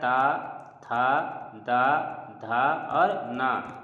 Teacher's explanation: ता, थ, द, ध और न ये जो है वो त वर्ग में आते हैं और त वर्ग जो है वो दंत से बोला जाता है